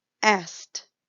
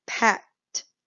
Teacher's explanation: So you almost don't hear that ed. It changes to a t sound.